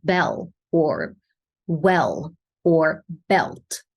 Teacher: we call it a dark L because we make a lot of tension in the back of the tongue